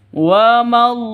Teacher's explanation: Lafdul jalalah ini, jika berada di tengah, panjangnya hanya dua ketukan. Ada tanda berdiri, ini hanya dua ketukan.